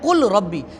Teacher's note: لام اور را کا مخرج ساتھ ساتھ ہے بالکل، تو ان کے ادغام کو ادغام متجانسین کہتے ہیں